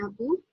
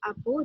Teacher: Daripada jadual ini kita dapati bahawa bahasa Melayu ini mengalami perubahan pada fonem akhir kata, di mana fonem akhir kata iaitu vokal U dalam bahasa Melayu telah diubah kepada vokal O dalam bahasa Melanau